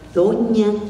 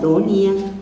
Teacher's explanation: en maya no existe la ñ, y entonces no decimos doña, decimos donia